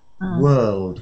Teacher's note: I get ready to do a L, but then I just slip into a D.